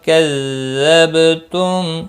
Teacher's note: با ساکن پر قلقلہ ہوگا